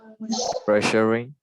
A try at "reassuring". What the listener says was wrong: Okay. This word starts with a re, so you need to read the reassuring. Yes, reassuring.